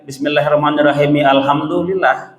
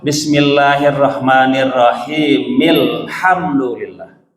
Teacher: Jadi alhamdulillah A-nya tidak dibaca. Karena itu disebut dengan hamzah wasal.